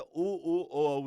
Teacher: उ ऊ ओ औ, इन चार पर वृत्त बनता है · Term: वृत्तमुखी